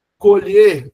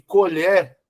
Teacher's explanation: Colher, verbo, olha o e fechado.